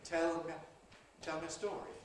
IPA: ˈtel mjə ˈstɔːri